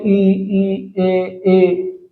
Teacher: अगर आपका जीभ यहाँ आगे आगे है, आगे की तरफ, ठीक है, तो ई ए आई ऐसे चीज अगर हैं तो फिर क्या होता है कि आगे आगे की तरफ जीभ करके बोलते हैं ई ए जीभ आगे है ना, तो ऐसे क्या होते हैं, अग्रस्वर कहलाएंगे।